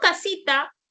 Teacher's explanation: cuando yo digo casita, acentúo la I